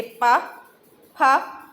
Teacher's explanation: ओष्ठ्य व्यंजन वो होते हैं जिसमें हमारे होठ जो होते हैं वो आपस में मिलते हैं।